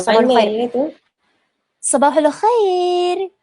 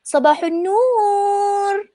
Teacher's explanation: lenggok orang Syria ni, yang hujung-hujung tu dia macam berlagu sikit. Macam ni kalau dia punya Sabahul Khair.